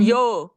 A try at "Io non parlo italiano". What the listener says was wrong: Yo no. Yo es español. Io non parlo italiano.